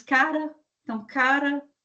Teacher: TEP, ou vibrante simples, é quando nós vamos ter uma pouca vibração, uma vibração simples do som, o R, por exemplo, se nós pegarmos cara, então cara, palavras assim, que nós vamos ter uma vibração pequena aqui na hora que o som é produzido.